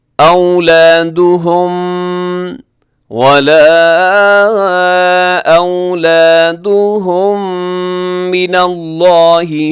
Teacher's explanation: اولادہم کے آخر میں میم ساکن، پھر میم ساکن کے بعد پھر میم آ گئی ہے تو یہاں ادغام شفی ہوگا، دونوں میم مل کے ایک میم بن جائیں گی